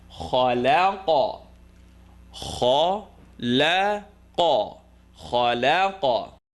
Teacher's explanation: Third part of the throat. Kha, la, and then qaf. It's behind the uvula.